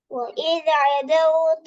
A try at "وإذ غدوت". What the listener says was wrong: أهلك عدوت عينا வந்துக்குது وإذ عدوتنا غاண்டு வராது வானத்தை நோக்கி غدوتنا அது ஐன் தான். அது غين வானத்தை நோக்கி வரணும். வா وإذ غدوت வா வானத்தை நோக்கி தூக்கணுமே. இல்லாட்டி பிள்ளை வல்லினமான எழுத்து எல்லாம் மறந்தாச்சா? وين வல்லினமான எழுத்து وإذ غدوت வா